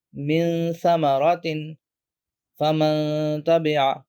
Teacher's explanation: the noon or tanween is hidden or softened into the next letter with a hum-like nasal sound · you're pronouncing it in a hidden way somewhere between the clear sound and a merged sound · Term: ikhfa